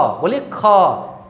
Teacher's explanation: हकार मार करके आपकी ध्वनि बाहर निकल रही है। और ऐसा भी आपको महसूस होगा कि आपके अंदर से, मुख से हवा जो है वो अधिक निकलता है। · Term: महाप्राण